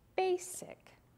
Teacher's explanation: most common way to divide is before the consonant and we're also going to accent the first syllable